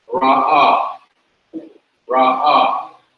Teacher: The ayin is not pronounced, just like the aleph is not pronounced.